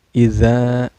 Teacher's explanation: Sikin iza za ini ada mad tabi'i lagi karena ada alif sebelumnya berbaris patah ya. Cara bacanya mad tabi'i ini dipanjangkan 2 harakat ya.